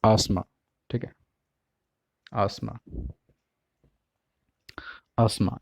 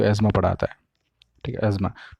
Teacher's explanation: ये जो आसमा है ये है ब्रिटिश प्रोनाउंसिएशन में, एज़मा ये अमेरिकन में